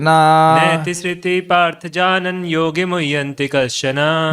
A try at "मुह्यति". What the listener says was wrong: मुह्यन्ति कहाँ से आ गया? नैते श्रुति पार्थ जानन योगी मुह्यति कश्चन।